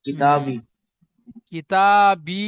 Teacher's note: আলিফের ডান দিকে যাবার আলি মাদ্দা, আলি মাদ্দা একালি পরিমাণ টান দিয়ে পড়তে হবে। আর ইয়া সাকিনে ডান দিকে জের, ইয়া মাদ্দা, ইয়া মাদ্দা একালি পরিমাণ টান দিয়ে পড়তে হবে।